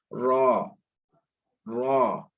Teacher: اب اسی طرح زبان کے نوک سے ہمارا یہ لفظ بھی ادا ہوگا، مخرج نمبر 11 والا، لیکن یہ بھی کیا ہے، اس کو بھاری پڑھنا ہے، موٹا پڑھنا ہے، موٹا ادا کرنا ہے